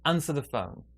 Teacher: big stress is on answer smaller stress on phone